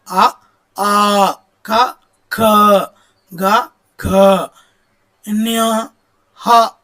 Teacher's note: కంఠం నుండి పుట్టే అక్షరాలను కంఠ్యాలు అని పిలుస్తారు